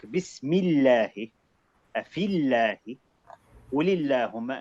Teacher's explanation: with the word Allah, if you see, if before it comes a kasra, it's always light.